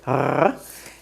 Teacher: the sound resh in Hebrew is made in the back of your throat. It's a rolling R, like in Spanish, r, but you bring the roll to the back of your throat, r, or like a dog growling, r.